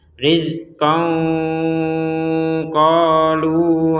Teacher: Nah ini tanwin bertemu qaf, kita samarkan.